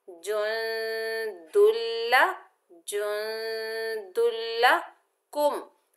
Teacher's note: लाम मुशद्दद यरमलून के मजमूए में से आया है तो यहाँ पर इदगाम बिला गुन्ना होगा, यानी इदगाम होगा। दो हरफों को ज्वाइन करेंगे लेकिन बगैर गुन्ने के पढ़ेंगे